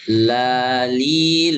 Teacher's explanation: Kemudian yang keenam inhiraf, menyimpangnya ya, lam, suara lam menyimpang ke keluar. Kalau ro menyimpangnya ke dalam ya.